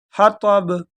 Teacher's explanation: یہ جو آخر میں با ہے یہ حروف قلقلہ میں سے، اس کو جھٹکے کے ساتھ پڑھیں گے